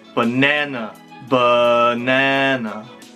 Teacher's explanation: second uh it's always unstressed · first a schwa is always voiced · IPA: /ə/